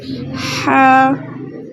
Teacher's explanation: ہا کو حلق کے درمیان سے جو ہے ادا کرنا ہے، اور ساتھ الف مدہ ہے تو ہم نے صرف اس کو 2 حرکت کی مقدار کھینچ کر پڑھنا ہے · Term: وسط حلق